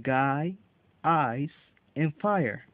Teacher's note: The first diphthong is I, as in guy, ice, and fire. This is a combination of sounds A and E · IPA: /aɪ/